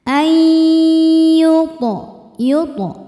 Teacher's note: Selanjutnya ada idgham bighunah. Sebab nun sukun bertemu huruf ya. Cara bacanya nun ini dimasukkan ke ya. Kemudian tahan dengungkan.